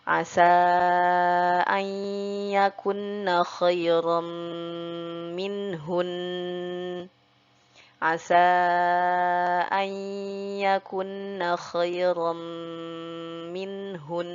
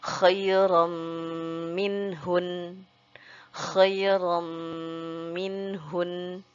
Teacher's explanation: ketika huruf nunnya bertasdid harus kita sertai dengung dulu sepanjang 3 harokat